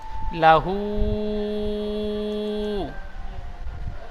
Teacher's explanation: হার উপরে উল্টো পেশ এসেছে, উল্টো পেশ ঔ মাদ্দার সমতুল্য, সুতরাং উল্টো পেশকে ঔ মাদ্দার মতো একালিক টান দিয়ে পড়তে হয়।